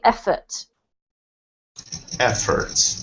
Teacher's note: Efforts has the emphasis on the first syllable